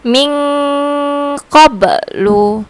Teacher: bacanya tuh samar-samar dan berdengung yaitu dengungnya itu sekitar du 2 sampai 2 Seteng Alif Ming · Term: ikfa, ikhfa